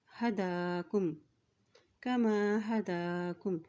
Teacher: दाल के ऊपर खड़ी ज़बर है तो इसको एक हरकत लंबा अदा करेंगे